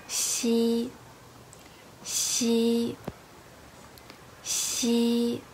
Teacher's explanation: The front of your tongue is close to the hard palate, but it doesn't touch it. Meanwhile, the tip of your tongue touches the lower gums. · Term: xi sound